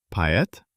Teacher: The stress is on e, so o relaxes and sounds like a. It turns out poet.